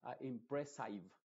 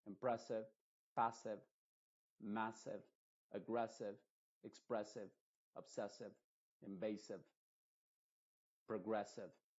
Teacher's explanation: como una e pero muy muy apagada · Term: I modificada